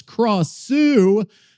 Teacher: The name Gra or Craw, Sue as in Sue in Dr. Seuss in a rising tone